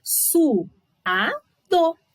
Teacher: cada vogal na sua sílaba, então ficou sendo um hiato